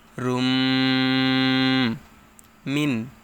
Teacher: তানবিনের পরে বা গুন্নাহর হরফ মিম আসছে তাই গুন্নাহর সহিত মিলিয়ে পড়তে হবে